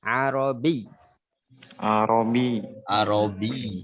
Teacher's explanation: Karena di sini ada ya dan ada tasdid, maka bi di sini harus ditekan.